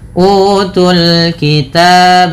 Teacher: pada lafal utul kitab, panjangkan u 2 harakat karena ia mad badal